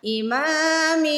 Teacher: غنہ مطلب ناک پہ آواز لے کے جائیں اور کھینچ کے ادا کریں